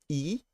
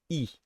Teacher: In this case, I will have my lips being like this, not like this, but like this. So E, So this is basically the same as the E in sheep in English, but in French it's not long, it's short.